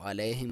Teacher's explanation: یا ساکن سے پہلے لام ہے، عین کو کلیئر کرے، اور یا ساکن سے پہلے لام پہ زبر ہے تو یہ ایسے یالین بولا جاتا ہے، اور اس کو علیہم نہیں پڑھنا، علیہم.